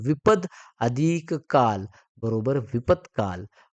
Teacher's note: इथं द चा काय होणार त होणार म्हणून मग द चा त झाला